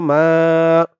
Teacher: মা এক আলিফ টান জবরের পরে খালি আলিফ